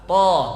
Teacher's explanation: Ujung lidah kena pangkal gigi. Pangkal gigi itu kena, kemudian pangkal lidahnya naik sehingga dia tebal. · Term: huruf to